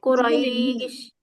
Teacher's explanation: মাদ্দালিন আসছে না, এক আলিফ টান হবে